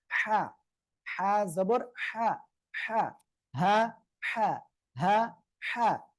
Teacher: গলাটা চেপে মুখ দিয়ে হালকা বাতাস বের করে উচ্চারণ করতে হবে।